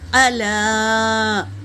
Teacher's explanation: لام پر کیا ہے؟ مد ہے، مد منفصل، 3 سے 4 الف کے مقدار کھینچیں گے